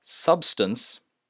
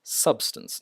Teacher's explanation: I stress sub and then just casually add stance substance not substance and capable not capable right capable decade profitable